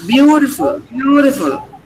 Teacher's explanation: Ch should not be heard very clearly.